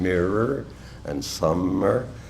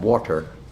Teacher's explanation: the feel of enunciating the nasal continuant M's in mirror and summer, then to move to the contrasting plosive T in water